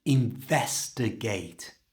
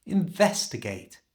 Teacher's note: To say this naturally, you need to stress vest.